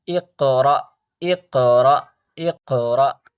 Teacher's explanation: الف پہ سکون دے دیا جائے، ساکن دے دیا جائے، تو اس کو تھوڑا سا جھٹکا دے کر پڑھتے ہیں